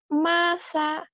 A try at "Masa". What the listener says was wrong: Cadel ya.